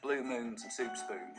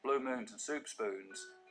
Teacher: I'll start off with very fronted goose vowels